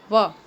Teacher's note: વ એ દંત્યોષ્ઠ, એટલે કે દાંત અને હોઠ બંનેથી બોલાતો